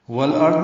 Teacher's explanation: والارض میں لام پڑھا جا رہا ہے، اظہار قمری ہے. دونوں میں فرق یہی ہے، السماوات میں الف لام نہیں پڑھا جا رہا، والارض میں الف لام پڑھا جا رہا ہے.